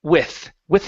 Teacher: give me a good th here instead of pronouncing an F